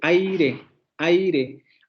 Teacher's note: tenemos la vocal cerrada anterior no la realizada y aire entonces como tenemos una vocal abierta y luego tenemos una vocal cerrada van a formar un diptongo